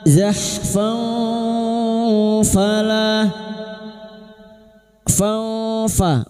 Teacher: Zahfan falah fa, fathah tanwin bertemu fa, ikfa hakiki. Kita samarkan bunyi fathah tanwin dan siap membunyikan huruf fa. Kita samarkan dan mendengung selama 3 harakat.